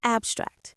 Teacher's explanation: As a verb, the stress goes on the second syllable, abstract. As a noun or adjective, the stress is on the first syllable, abstract.